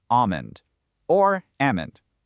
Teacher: Standard American English completely drops the L in almond to make it almond or almond. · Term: silent L